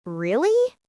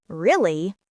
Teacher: Like when someone says, really? With rising intonation, it sounds curious, but really, with a flat tone, sounds annoyed.